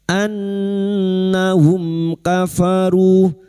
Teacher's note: Maka mim sukun bertemu kaf dibaca jelas tanpa mendengung.